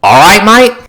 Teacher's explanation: You don't hear the T sound of the word R-I-G-H-T. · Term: The T sound disappeared